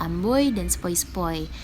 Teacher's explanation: diftong naik menutup maju, atau yang biasa kita dengar oi, misalnya pada kata amboy dan sepoi-sepoi.